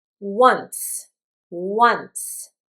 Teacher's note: This is an interesting pronunciation because I pronounce a W, wuh, but you don't see it here.